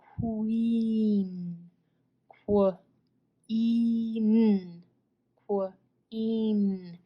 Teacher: Q does make the sound qu, and you almost hear a w there. Qu, qu.